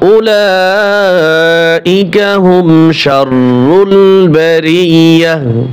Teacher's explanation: গোলতা সব সময় ওয়াকফের সময় হা উচ্চারণ হয়, গোলতা হা উচ্চারণ হয় সব সময়ের জন্য।